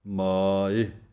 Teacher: ਮਾਇ ਇੱਦਾਂ ਬੋਲਣਾ ਹੈ ਕੰਨੇ ਨੂੰ ਲੰਮਾ ਕਰਕੇ